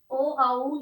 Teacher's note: ये कंठोष्ठ, कंठ और होठों के स्पर्श से बोले जाते हैं।